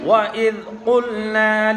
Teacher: وَإِذْ قُلْنَا میں قاف حروف مستعلیہ میں سے ہے، اس لیے پر پڑھا جا رہا ہے